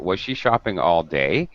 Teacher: You notice that is giving very clear final rising intonation. Her voice pitch is going up at the end of the question. That's very good because it's a yes or no question.